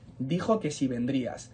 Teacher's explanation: tanto el que como el sí son palabras átonas y por eso se van enlazando y es como si formáramos una sola palabra